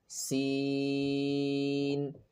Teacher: Sin is pronounced with the tip of the tongue near the lower teeth without touching, same like za.